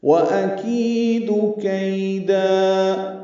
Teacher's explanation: حمزہ ہے، یہ اقصی حلق سے بالجہر ادا ہوگا بلند آواز سے